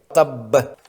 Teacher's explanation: جب اس حرف پر وقف کریں گے تو آخری با جس پر زبر ہے وہ بھی ساکن ہو جائے گی۔ 2 ساکن با اکٹھی آنے کی وجہ سے دونوں کو پڑھنے کے لیے لمبا اور زوردار قلقلہ کرنا ہوتا ہے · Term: قلقلہ کبریٰ